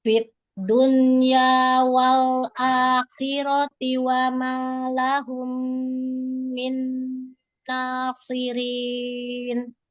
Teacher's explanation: Jadi lam sukun jangan diberhenti ya, jangan syiddah ya. Suaranya dialirkan ya.